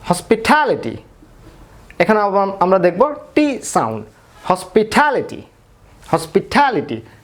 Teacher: টি stress হচ্ছে এজন্য টটা ঠ এর মতো উচ্চারণ হচ্ছে।